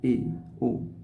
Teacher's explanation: वे स्वर जिनके उच्चारण में मुंह संवृत्त स्वर की तुलना में आधा बंद सा रहता है उसे अर्ध संवृत्त स्वर कहते हैं